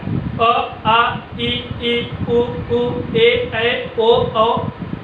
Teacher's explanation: ठीक है, जब स्वर का उच्चारण करते समय वायु मुंह और नाक दोनों से निकलती है तो वह अनुनासिक कहलाता है। और जब स्वर का उच्चारण करते समय वायु केवल और केवल मुंह से निकलती है तो इसे निर्नुनासिक कहा जाता है।